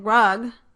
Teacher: the tongue body approaches the hard palate. So the hard palate is the passive articulator for the sound. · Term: palatal